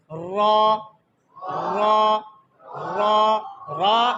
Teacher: रॉ यानी पूरी जबान हिलती है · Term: तकरार